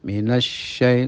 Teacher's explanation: Shin itu ada sifat tafasyi, yaitu angin menyebar di atas lidah, menyebar dengan kencang di atas lidah. Tapi perlu difahami, di atas lidah itu berarti ya sedikit, lidah itu kecil.